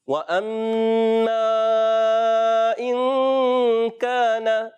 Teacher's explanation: الف مدہ ایک الف کھینچ کر ادا کریں گے, یہاں نون کی زبر کو نہیں کھینچیں گے